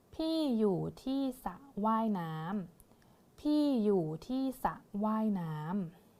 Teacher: เราจะไม่ออกเสียงรอเรือนะคะจะอ่านแค่สระเท่านี้เลยนะคะ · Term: คำควบกล้ำไม่แท้